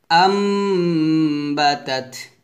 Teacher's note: তো এই মিমটা আসুক না আসুক করে দেখার বিষয় না, আমরা দেখবো নুন সাকিনের পর বা আসছে কিনা। বা আসলে আম বলতে হবে, গুণনা করতে হবে, ইকলাব গুণনা হবে